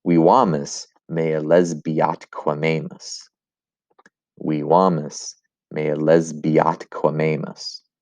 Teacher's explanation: Three words that can elide together. Lesbia and atque can elide together. Atque and amamus meet the requirements for elision.